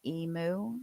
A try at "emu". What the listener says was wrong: It's emu. No, there's no O. There's no O at the end of emu.